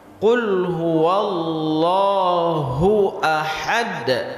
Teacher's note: Di ujung itu ada qalqalah. Qul huwallahu ahad. dibaca langsung, jangan dipanjangkan.